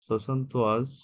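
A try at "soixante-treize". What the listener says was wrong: ওয়াজ না, থেজ, ওয়াজ না, সোয়াসন্ত থেজ, হ্যাঁ।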